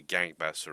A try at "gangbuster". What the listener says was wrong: It sounded like you said gangbaster.